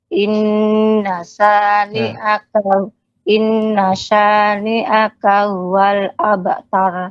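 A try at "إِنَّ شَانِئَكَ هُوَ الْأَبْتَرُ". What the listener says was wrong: Ya, bukan wal, wa, tapi monyongkan wa. Inna syani'aka huwal.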